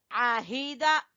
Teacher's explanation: हा को गले के आखिरी हिस्से से निकालेंगे